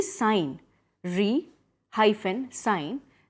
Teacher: the S is pronounced as s only and you emphasize the first syllable